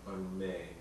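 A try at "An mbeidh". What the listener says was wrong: Unmay. Yeah, you don't actually, in speech you don't really normally pronounce the N, so it's really a may. And that varies also, dialect.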